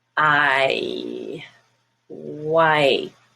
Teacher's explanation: It's a diphthong. It starts one way and it ends up in a different way, both as far as the movement in your mouth and also the sound, which changes.